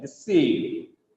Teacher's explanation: The second syllable is stressed here. It has 2 syllables.